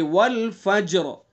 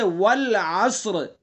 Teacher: را ساکن سے پہلے صاد ساکن، اس سے پہلے عین کے اوپر زبر، تو اس لیے را پر ہوگی۔ تو قاعدہ یہ ہے کہ را ساکن ہوگی، اس سے پہلا حرف ساکن ہوگا، اس سے پہلے زبر پیش ہوگا تو را پر ہوگی۔